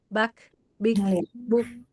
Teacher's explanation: kaf itu dari segi suaranya syiddah, dari segi nafasnya hames